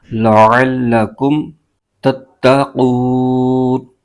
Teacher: عین کی جو آواز ہے یہ حلق کے درمیانی حصے سے نکلتی ہے، تو یہاں سے نکالنا ضروری ہے، ورنہ یہ حمزہ کی آواز نکل جاتی ہے، لعلکم پڑھتے ہیں، یہ غلط ہے، عین کی آواز کے ساتھ پڑھنا ہے، لعلکم تتقون۔